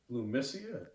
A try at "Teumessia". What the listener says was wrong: Teumessia. Teumessia. Starts with the T. T is in Tom.